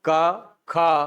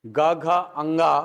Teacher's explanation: मतलब जैसे पांच वर्ग है ना तो क वर्ग में क ख अघोष है ग घ अ ङ सघोष है